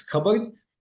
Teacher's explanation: the P sound almost always doesn't get sounded in the actual pronunciation of the word cupboard